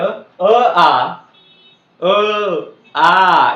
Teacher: अ आ याचा उच्चार कुठून होतो मित्रांनो कंठातून होतो